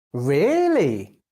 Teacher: you can use a rising falling tone to sound excited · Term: Rising falling intonation